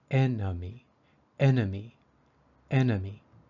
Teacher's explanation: the second e in enemy is a little different it sounds like a short U